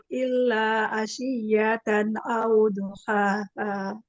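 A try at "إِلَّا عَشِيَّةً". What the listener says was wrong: Huruf ainnya bukan lagi. Illa a. Jangan kayak Hamzah. Huruf ain ya dibuka lagi biar jangan seperti Hamzah. Ya, huruf ain ya. Bedakan huruf ain dengan huruf Hamzah ya.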